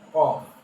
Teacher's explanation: জিহ্বার গোড়া তার বরাবর উপরের তালুর সাথে লাগাইয়া